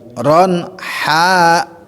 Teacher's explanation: Nah, haknya panjang karena haknya itu fathah berhadapan sama alif.